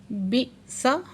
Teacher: بئس حمزہ ساکن ہے، جہاں جھٹکا لگا کے پڑھیں گے